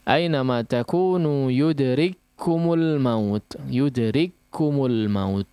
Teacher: Kaf pertama diidghamkan atau dimasukkan, dileburkan kepada kaf berikutnya, seolah kaf berikutnya atau kaf yang kedua itu bertanda tasydid. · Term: idgham mithlain